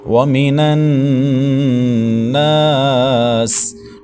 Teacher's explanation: نون مشدد کا غنہ ہے، اور ناس نون کے بعد الف مدہ ہے، ایک الف تک کھینچیں گے۔ سین سیٹی والے حروف میں سے ہے تو سختی کے ساتھ ادا کریں گے۔